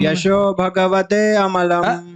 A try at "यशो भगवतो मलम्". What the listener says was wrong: ते कहाँ से आया? ते कहाँ से आया इसमें?